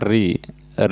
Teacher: ऋ जो है मूर्धन्य हृस्व स्वर का उदाहरण है